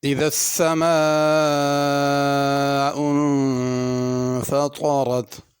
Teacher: اذا میں ذال ہے، اس کو ذا کر کے نہیں پڑھنا